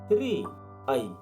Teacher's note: ऋको उच्चारण नेपालीमा संयुक्त वर्णको रूपमा हुन्छ: र अनि इ